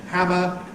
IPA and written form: ˈhæmə (hammer)